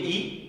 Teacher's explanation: आपके जो जीवा का आगे का भाग है वो नीचे के दांतों के मसूड़ों के पास आ रहा है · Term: अग्र स्वर